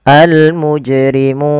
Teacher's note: sukun panjangnya berapa harakat untuk Mad Arid l sukun sendiri yaitu panjangnya adalah boleh dua harakat boleh pula empat harakat boleh pula 6 harakat